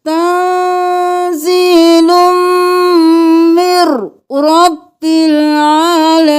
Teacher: تنزیل مر کرنا ہے، من نہیں کرنا، میم کو رو کے ساتھ ملانا ہے